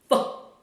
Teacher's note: so I'm using only the air friction to produce this sound. So what I'm doing here, I'm pushing the air out from my mouth.